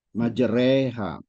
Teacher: ya betul tadi apa kalau hukum bacaannya sih imalah ya dimiringkan yang patah pada ro itu jadi agak ke kasroh ya jadi re gitu ya bunyinya